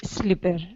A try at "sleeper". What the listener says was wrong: Sleeper. Make sure you get the E sound, because you don't. Yeah, you don't want to say slipper, right? Sleeper.